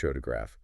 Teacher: You start with PH photograph. Stress is on the first syllable.